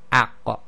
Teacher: So here we have the aqqa, and this is one of the qalqala letters. It requires the releasing of the tongue from the back of the throat in order to complete the sound, and it's a stoppage of breath again.